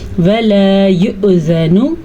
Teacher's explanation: واؤ تب پڑھا جاتا ہے جب اس کے اوپر حمزہ نہ ہوتا۔ حمزہ آنے کے ساتھ جو حرکت حمزہ کے اوپر ہے وہ پڑھی جائے گی، چھوٹا سا جھٹکا پیدا ہوگا